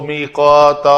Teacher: میقاتن دو زبر والی تنوین ہے، جب وقف کرنا ہے تو اس کو الف مدہ بنا کر وقف کرنا ہے